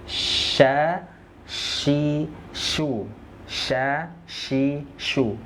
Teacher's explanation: Tengah lidah menyentuh ke langit-langit · huruf syin Ya keluarnya dari tengah lidah